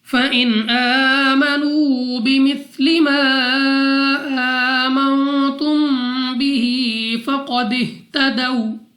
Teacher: نون ساکن کے بعد تا حروف اخفا میں سے ہے، غنہ کر کے پڑھیں گے